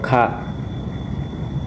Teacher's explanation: Kemudian huruf Kaf atau Ka, bunyi langit-langit belakang, adanya letupan, tidak bersuara tipis